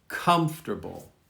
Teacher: Hear how the accent is at the beginning, comfortable.